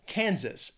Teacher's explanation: two syllables stresses on that first syllable